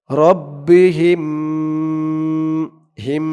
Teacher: রব্বিহিম হিম গুন্না হবে কারণ এখানে মিম সাকিনে ইদগাম মিম সাকিনের পরে এই মিম আসছে তাই এখানে গুন্না হবে রব্বিহিম